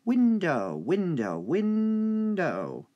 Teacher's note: Win is the stressed part.